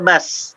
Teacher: baz Tidak bas. Kalau bas itu ada huruf S, itu pasti ada nafas mengalir.